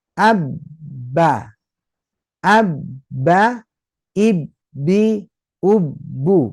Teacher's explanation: jadi pastikan harus tertahan karena memang itu ada tasdid tasdid itu menunjukkan berapa huruf dua huruf